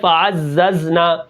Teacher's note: زا کو ہم کیا کریں گے، سیٹی کے ساتھ پڑھیں گے